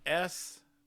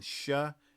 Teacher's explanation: The S peak is a little bit higher. The SH peak is a little bit lower.